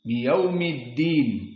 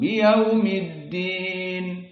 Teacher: Nah, lihat alif lam pada ad-din. Di sini karena disambung dengan yaum, maka hamzahnya hilang. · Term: hamzatul wasl